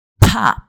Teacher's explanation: You could hear the amount of air that got out of my mouth. It's very different from saying poppy. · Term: P sound